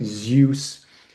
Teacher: But if you look at the name of the god Zeus, Z EUS, that EU is actually a diphthong that makes this kind of oo or you sound